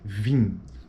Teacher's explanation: final de palavra ela coloca um exemplo da palavra vim vim Então esse i é uma vogal eh tônica nasal em final de palavra